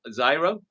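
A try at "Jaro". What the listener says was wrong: I think it's Haro. I think it's a hard H.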